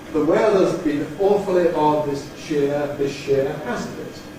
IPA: ðə ˈweəðəz bɪn ˈʔɔːfəli ˈɒd ðɪʃ ˈʃɪə | ˈhæznt ɪt |